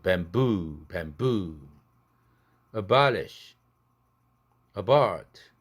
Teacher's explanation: 이게도 bamboo도 대나무인데 앞에 있는 부와 뒤에 있는 부가 다르죠. 앞에 있는 부는 그 음절에 액센트가 없으니까 부드럽게 시작합니다. 약하게 파열되죠.